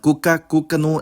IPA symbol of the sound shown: u